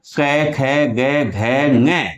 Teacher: ये सभी ध्वनियां कंठ से उच्चारित होती हैं अर्थात इनके उच्चारण में हमारी जिवा कंठ के पास स्पर्श करती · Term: कंठ ध्वनि